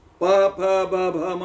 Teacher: ಎರಡು ತುಟಿಗಳು ಒಂದಾಗಿ ಗಾಳಿ ಹೊರಗೆ ಬರಬೇಕು